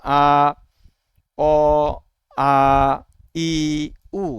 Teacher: আমরা যখন আমরা উচ্চারণ করছি আমাদের কোথাও বাধা পাচ্ছে না · ফুসফুস তাড়িত বাতাস যে বের হয়ে আসে এটা আমাদের মুখের কোথাও বাধা পায় না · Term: স্বরধ্বনি